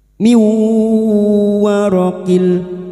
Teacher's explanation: Nun sukun atau tanwin yang bertemu dengan empat huruf ini termasuk huruf wau ya nun mim wau. Maka bunyi nun sukun masuk pada huruf berikutnya yaitu huruf wau dan mendengung selama tiga harakat.